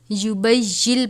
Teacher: یہ نون ساکن کے بعد لام مشدد ہے تو ہم اس نون کو اس لام سے ملا دیں گے ۔ تشدید کی صورت میں پچھلے حرف کو اگلے حرف سے